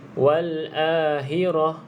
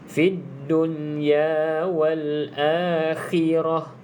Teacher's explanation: Yang kedua pada perkataan khirah, jelaskan makhraj huruf kha ini. Kalau tak, dia akan bunyi seolah-olah huruf ha. Wal ahirah.